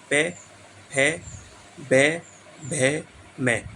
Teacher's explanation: देखो होठों से बोले जा रहे हैं, होठ आपस में लग रहे हैं। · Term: ऊष्टीय